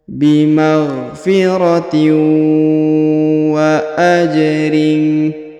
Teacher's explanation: kita leburkan langsung masuk ke huruf waw bertasdid, kita tahan dan kita tekan serta kita dengungkan